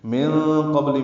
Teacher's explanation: من قبل میں نون ساکن کے بعد قاف آنے کی وجہ سے اخفا ہے، نون کی آواز چھپائیں گے